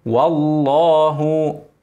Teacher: اسم الجلاله اللام مفخمه قبلها مفتوح